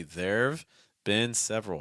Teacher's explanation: we want to say these contractions light we want to say them fast and we want to say them a little bit lower in Pitch